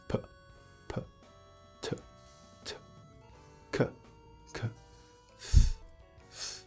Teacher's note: sons de consonnes sans vibration, comme P, P, T, T, K, K, Th, Th, Th. Vos cordes vocales ne vibrent pas